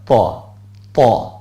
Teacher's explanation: তোয়াটা একটু মুখ হালকা গোল করে বলেন, ত, ত, তোয়াটা বললে এমনি তো জবরের কারণে তা না হয়ে তই থাকবে, ওই যে 8 অক্ষরের 1 অক্ষর, যাতে জবর হলে আকার উচ্চারিত না হয়, একক উচ্চারিত হয়।